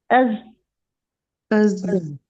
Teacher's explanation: लेकिन क्योंकि हमने इसको सख्ती से, मतलब हमारे जो नरखरा है उसने भी वाइब्रेट किया, तो ये एक अज की आवाज आ गई, अज। ठीक है, अस नहीं निकला, अज, अज।